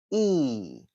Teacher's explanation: let's start with our front and close vowel e. E, as you can see, uh, I've put in, uh, this e in a sort of long rectangular shape uh, to give you the idea that it should be pronounced with your lips stretched quite wide.